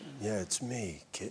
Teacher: it's actually kind of a very breathy, low-register bedroom voice